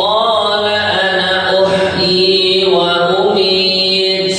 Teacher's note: walaupun ada tanda alifnya tapi setiap lafaz Ana di seluruh al-qur'an dibaca pendek